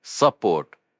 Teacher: Support, pronounced like it looks, support, with the stress on the second syllable, support.